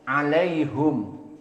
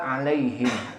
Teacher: dhammah pada dhamir alaihum, tidak dibaca alaihim